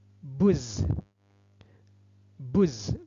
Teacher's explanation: Sebab alif lamnya tidak dibaca jelas, langsung diidghamkan, dimasukkan kepada huruf zai. Huruf zai atau huruf syamsiyah. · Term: idgham syamsiyah